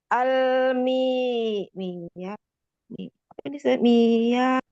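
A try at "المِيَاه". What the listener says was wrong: Mi-nya mat. Jadi ditahan lam sukunnya ya, jangan buru-buru. Terus tekan suaranya ke bawah lam sukunnya dari tenggorokannya itu ya.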